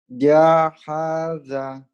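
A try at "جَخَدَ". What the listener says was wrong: Jakhada. Bukan ha tapi ho ya. Ini titiknya di atas ho. Kalau ha tak ada titik. Jakhada.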